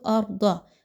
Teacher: ضاد جو ہے وہ موٹا حرف ہے اس لیے اس کو خوب موٹا کر کے پڑھیے